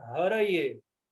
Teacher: o E, ele é fechado e tem uma tonicidade aí